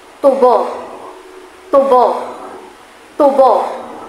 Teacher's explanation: Kapag ang diin ay nasa unang bahagi, nangangahulugan nitong ginagamit sa paggawa ng asukal.